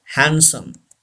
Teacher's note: डी is not pronounced